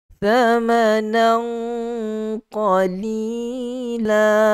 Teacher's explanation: Thamanan, tanwin bertemu dengan qaf adalah ikhfa haqiqi. Okey, sembunyikan bunyi tanwin itu ke dalam huruf qaf yang tentu sekali padanya ada sifat isti'la. Tu sembunyi pun sembunyi dengan cara yang tebal, dengan cara yang ada sifat isti'la sedikit.